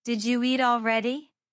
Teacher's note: sometimes new sounds appear between words like a Y sound or a soft ch sound